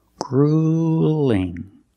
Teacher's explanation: with the uel we don't say it's not grueling it's grueling use the long u plus the light L